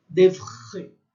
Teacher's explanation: É um R sentido aqui na garganta que a gente não faz